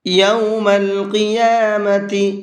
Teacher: یہاں یہ بڑا قاف ہے تو بڑے قاف کو پر کر کے پڑھیں گے